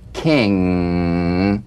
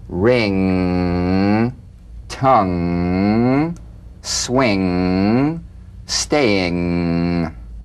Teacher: sing with the back of the tongue in contact with the soft palate. Back of the tongue to the soft palate.